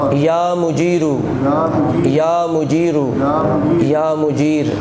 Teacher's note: پہلے دو دفعہ مجیرو اور آخر میں مجیر چونکہ وقف ہے